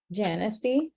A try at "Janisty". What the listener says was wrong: it's pronounced honesty honestly all right thank you the Jay silence